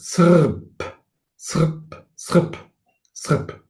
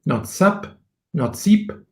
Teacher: And the R with this circle below means that it is a vocalic R, that is a syllabic R. So that means that this R is a vowel. So it could be pronounced something like, like in Sanskrit, srp, srp, srp, srp, not sap, not seep, but srp.